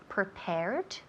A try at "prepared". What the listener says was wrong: Más fuerte al final, la terminación. El último sonido es una D. D. Okay, so es muy importante poder escuchar o oír ese último sonido.